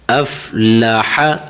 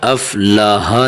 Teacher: یہاں حرف حا کو بالکل باریک کر کے پڑھنا ہے۔ افلح، افلاح نہیں، ہا نہیں پڑھنا، اسے حا پڑھنا ہے، حا سینے سے آواز نکالنی ہے اس کی۔